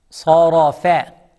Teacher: Sad is heavy, no smile. Ra is heavy, no smile. And fa is soft, smile.